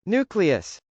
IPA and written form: nˈukliəs (nucleus)